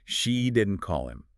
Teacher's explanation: Stress on she. So stressing she, according to the source, that means someone else called him.